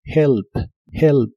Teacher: la H de esta palabra se pronuncia como una J suave